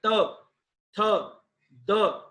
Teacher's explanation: जब आप त थ द बोलेंगे, देखो आपकी जीभ आपके ऊपर वाले दांतों के पास आती है, त थ द, चाहे आप बोल के देख लीजिएगा बाद में इसको।